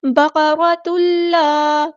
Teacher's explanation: تنوین کے بعد جب لام آئے تو اس کا مطلب ہے یہاں پہ ادغام ہو رہا ہے، ادغام بلا غنہ ، ادغام کامل، بقرۃ اللہ، تو اللہ نہیں کہنا، لام باریک